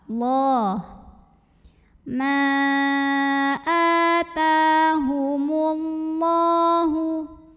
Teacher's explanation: Lam pada lafaz Allah atau lam jalalah dibunyikan secara tafkhim sebab huruf sebelumnya mim barisnya dhammah. Cara bacanya tebal.